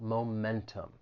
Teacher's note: the word has three syllables the stress is on that second syllable